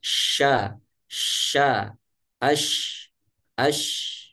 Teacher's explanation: angin menyebar di mulut, ya, akibat benturan angin yang membentur dinding gigi seri atas dan gigi seri bawah, sehingga seperti di dalam mulut ini terasa penuh angin, ya. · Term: tafashi